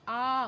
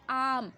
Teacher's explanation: विवृत में क्या होता है, मुंह ज़्यादा खुलता है, आ, पूरा मुंह आप खोल देते हो, फिर आप आम, है ना, पूरा मुंह खोल के उच्चारण कीजिए, पूरा मुंह खोल के आप बोलेंगे आम।